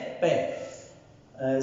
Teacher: और जैसा कि हमने सर्वप्रथम देखा था कि पै जब बोलते हैं तो अवरोध जो रुकावट जो स्पर्श होता है वो पोस्ट पे होता है। दोनों होठ मिलते हैं। फिर जब खुलते हैं तब उच्चारित होता है पै।